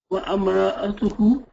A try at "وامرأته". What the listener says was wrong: No, not wa'am. Wam.